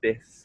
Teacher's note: So the lip comes up and down, it touches the teeth, the lips stay quite closed for the F sound, and the air passes through